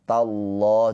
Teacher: Lafaz Allah dibaca dengan tafkhim tebal karena sebelum lafaz Allah ini harokatnya fathah.